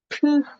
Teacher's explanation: T 같은 경우에는 트흐 같은 발음이 나고요. 이 흐 발음이 굉장히 약해요.